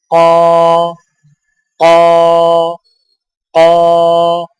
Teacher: قاف موٹی آواز، ادائیگی کے وقت زبان کی جڑ کو کوے کے متصل تالوں پر لگائیں